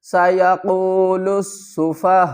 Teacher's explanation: سَيَقُولُ السُّفَهَاءُ، سَيَقُولُ، لام کو سین کے ساتھ ملائیں گے، اس الف اور اس لام کو نہیں پڑھیں گے۔ لُسُّفَا، ہا الف مد زبر ہا، 5 الف کی مقدار کھینچ کر پڑھیں گے۔